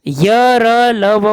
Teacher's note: य र ल व को अंतस्थ कहते हैं क्योंकि इनका उच्चारण व्यंजन तथा स्वरों का मध्यवर्ती सा लगता है। इनका उच्चारण जीभ, तालु, दांत और ओष्ठ के परस्पर सटाने से होता है।